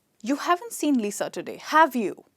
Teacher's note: So my voice goes from low to high. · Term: intonation